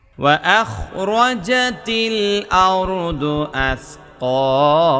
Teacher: আসকালার মধ্যে এক আলিফ টান, হার মধ্যে এক আলিফ টান।